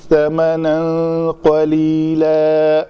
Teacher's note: میں نے اس کو 2 زبر کو الف مدہ بنا کر پڑھا ہے